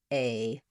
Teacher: A is one sound. It's a sound that happens as I move from E to the I position. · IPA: /eɪ/